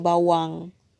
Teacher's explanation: Untuk huruf waw, dia kata kat sini, bunyi konsonan W bukan jadi bunyi U